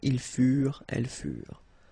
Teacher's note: Keep in mind that ENT, you know, the ending for the plural form is never pronounced